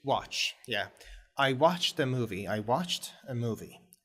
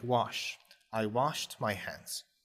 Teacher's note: that's how the pronunciation of Ed at the end of a verb can change to T